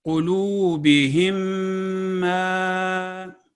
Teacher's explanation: میم ساکن کا میم متحرک میں 2 سیکنڈ غنہ کے ساتھ کامل ادغام کو ادغام شفوی کہتے ہیں. یعنی میم ساکن جب میم مشدد کے ساتھ مل رہی ہو تو 2 سیکنڈ کا غنہ ہوگا